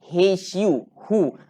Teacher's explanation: kita tekan bunyi ha tu dalam keadaan kita boleh rasa angin keluar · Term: huruf ha